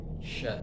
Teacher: Lidah bagian tengahnya agak agak naik ya. Cuma enggak sampai nyentuk dan anginnya apa? Menyebar gitu ya.